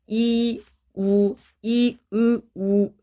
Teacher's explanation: 이 발음할 때랑 우 발음할 때랑 혀 끝에 그 위치가 조금 더 뒤로 이동이 돼요. 이, 우 점점 뒤로 가거든요.